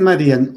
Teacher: Era aguda, pero se volvió, o era grave, pero se volvió, si era aguda se volvió grave, porque la fuerza de la voz recayó en esa I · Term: diptongo roto